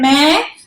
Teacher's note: तो आपके मुंह और नाक दोनों से आवाज आ रही है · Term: अनुनासिक